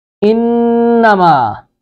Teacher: انما نون مشدد پر غنہ کریں گے، نون پر شد آ گئی ہے، زبان کو تالو کے ساتھ لگائیں گے اور ناک میں آواز جائے گی